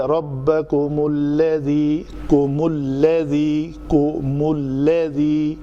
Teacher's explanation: جب ہم یا کم کی میم ساکن ہو، اس کے بعد والا حرف بھی ساکن ہو، جیسا کہ یہ لام ساکن ہے تو پہلے میم کو ضمہ دیا جاتا ہے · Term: اجتماع ساکنین